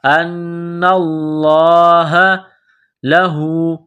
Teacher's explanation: ألم تعلم ان اللہ، نون مشدد ہے، غنہ کریں گے، آواز ناک میں چھپائیں گے. لفظ اللہ کے نام سے پہلے زبر ہے، لفظ اللہ کے نام کو موٹا کرنا ہے